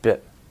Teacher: So it's shorter in bit, not only because it's just shorter, but the tongue muscle is relaxed, and it's actually a completely different vowel sound.